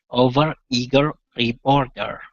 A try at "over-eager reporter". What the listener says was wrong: There you go. Good, good.